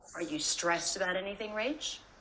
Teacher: It's a little uncommon to stress a function word like this. Normally, I think I would stress the word stressed.